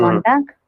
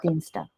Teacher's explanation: So here this word is ending with G. You have to pronounce as ka.